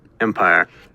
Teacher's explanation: Yes, it was an aspirated stop in the middle.